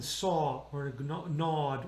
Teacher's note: Now the O is going to be an open O vowel.